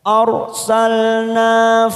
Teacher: huruf ro sukun yang didahului fathah pada huruf hamzah maka kita baca tebal atau tafkim.